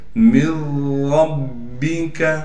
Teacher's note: اب ہم نے اس نون کو بالکل ختم کر کے اس کو ہم را میں مدغم یعنی داخل کر دیں گے